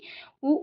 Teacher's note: ఉ ఊ అనేవి ఓష్ట్యాలు ఎందుకనగా అవి పెదవుల నుండి పుట్టినవి.